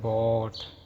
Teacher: a back mid tense rounded vowel represented by the symbol O